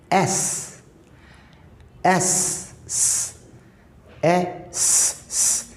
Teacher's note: It's like a whistling S